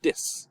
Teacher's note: Caribbean accents, where they may pronounce it with a D sound